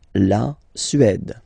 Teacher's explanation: Remember, accent grave, it's really open.